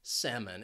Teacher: And the reason why this word is commonly mispronounced is because of that L. This is a silent L, so you can forget about it, get rid of it when you're saying the word, and you would just ask for salmon.